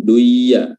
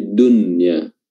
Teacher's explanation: nun mati ketemu ya, itu maka nunnya dibaca dengan izhar, dibaca jelas, jangan di idgham duya, ya salah, tapi dunya.